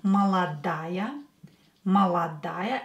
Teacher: replace ой with ая, молодая. Молодая, and а will be stressed.